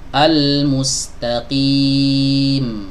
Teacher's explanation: jadi jangan sekali-kali kita putus suaranya ketika kita masuk huruf M ini